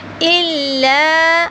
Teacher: لام کو تھوڑا سا لمبا کریں گے، زبر کے بعد الف آ رہا ہے